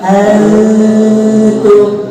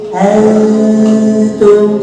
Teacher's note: Huruf ta itu adanya di depan, maka si suara maju ke depan, kejar si dengungnya ngejar ke huruf ta. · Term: ikhfanya akrob